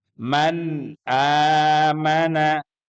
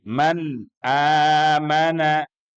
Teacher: huruf nun sukun yang bertemu dengan salah satu huruf halqi yaitu Hamzah pembacaannya sekali lagi harus jelas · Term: izhar